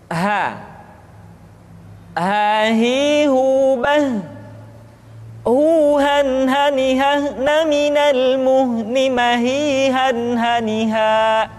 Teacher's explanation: huruf ha dikeluarkan dari tenggorokan yang terjauh sama seperti kita mengucapkan huruf a ha ha perhatikan huruf ha